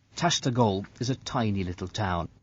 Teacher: we can hear the two words is pronounced as isa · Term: linking